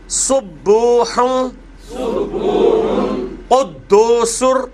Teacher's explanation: یہ قدوسن ہے لیکن را کے ساتھ وہ پھر مل جائے گا